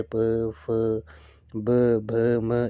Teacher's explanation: जिन व्यंजनों के उच्चारण में दोनों ओष्ठों द्वारा श्वास का अवरोध होता है ओष्ठ्य व्यंजन कहलाते हैं। जैसे प, फ, ब, भ, म, इनमें जो है वो दोनों ओष्ठों द्वारा जो है वो श्वास का अवरोध होता है।